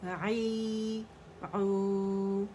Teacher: Middle throat سے letter کو نکالیں گے، الف اور یا اور واو اپنے جو آپ کو حرکات نظر آ رہی ہیں اس کے ساتھ یہ کھینچیں گے، جس سے آواز جو ہے وہ اوپر جائے گی، نیچے جائے گی اور گول ہو جائے گی.